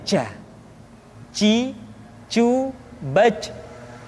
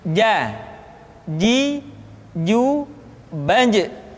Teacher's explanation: Padahal kalau kita melihat sifat yang dimiliki huruf ja, dia tidak boleh mengalir nafas karena sifatnya al-jahr, lawan dari al-hamas.